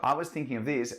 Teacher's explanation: I'm using this intonation this rising intonation to transmit to you that I would like your input